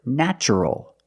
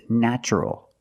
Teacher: natural we see t r plus a vowel an a also in this pattern the t is pronounced with the CH sound